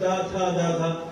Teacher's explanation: ta is coming from our tongue and teeth